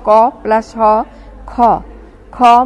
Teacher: হ ধ্বনি মিশে যায় তখন মূল ধ্বনিটি হয় প্রাণ ধ্বনি যেমন মূল ধ্বনি ক উচ্চারণে মহাপ্রাণ হ ধ্বনি মিশলে হয় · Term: মহাপ্রাণ ধ্বনি